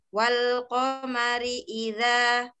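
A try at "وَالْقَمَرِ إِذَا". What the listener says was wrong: Bukan wa tapi wal. Walqamari idza. Wal.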